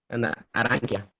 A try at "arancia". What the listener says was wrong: Arancia, arancia, ¿sí? Porque tenemos la C y la I, ¿sí? Entonces, chi, ¿ok? Pero aquí como es una A nada más, K, ¿sí? Arancia, ¿sí?